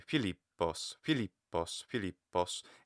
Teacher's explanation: I put the stress accent on the lip? So that would be Philippos, Philippos, Philippos, and it's louder, that leap.